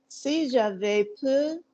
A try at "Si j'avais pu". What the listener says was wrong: Si j'avais pu. Not j'avais, not je vais peu. Not je vais, which is I'm going, or peu, which is I can. Si j'avais pu. P-U, pu. Si j'avais pu.